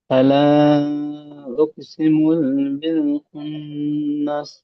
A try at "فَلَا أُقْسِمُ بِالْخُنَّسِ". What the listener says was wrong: হ্যাঁ, এখানে দেখেন, ফালা উকসিমু বলে টান দিয়েছেন। মিম পেশ মু হারাকাত আছে, তাই না? হারাকাতের পড়াকে তাড়াতাড়ি পড়তে হবে। ফালা, এই যে উপরে মাদ রয়েছে, মাদের পরে এখানে হামজা দ্বিতীয় শব্দের মধ্যে এসে বা ভিন্ন রূপে এসে, দেখেন তো আলিফের রূপে, তাই না? তাহলে মাদ্দে মুনফাসিল, মাদ্দে মুনফাসিলকে 2 থেকে 3 আলিফ টান দিতে হবে।